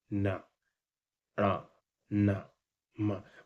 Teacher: इसमें ध्वनि नाक से भी निकलती है मुंह से भी निकलती है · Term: अनुनासिक व्यंजन